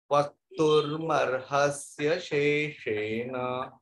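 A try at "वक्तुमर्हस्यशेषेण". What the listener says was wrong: Mahode, it is not vaktur, it is vaktumarhasya. After ma you have to put the ra.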